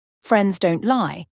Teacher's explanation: notice how she emphasizes the word lie with a lot of intensity